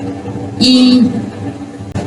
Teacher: ये front close बाउल कहलाएगा